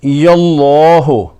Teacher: چونکہ اسم جلالہ سے پہلے زبر آ رہی ہے، اس لیے قاعدہ لام تفخیم کے مطابق اس لام کو پر یعنی منہ بھر کر موٹا پڑھیں گے